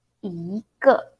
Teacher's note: I pronounce second tone and then neutral tone. So the 个 this word, when we use it as a measure word, we pronounce neutral tone or fifth tone or no tone.